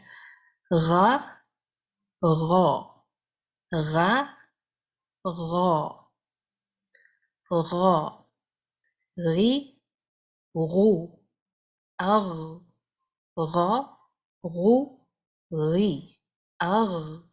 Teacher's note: غائن کی آواز کو تھوڑی دیر جاری رکھتے ہیں جب یہ سکون کے ساتھ ہم پڑھتے ہیں، یہ اس کی کوالٹی ہے، اور اس کے ساتھ جس طرح میں نے کہا کہ سانس جاری نہیں ہوتی۔